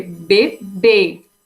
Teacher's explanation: A sua última sílaba sendo ela a mais forte. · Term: oxítonas